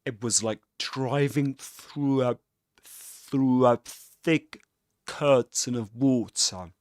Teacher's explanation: does release the air at the end of thick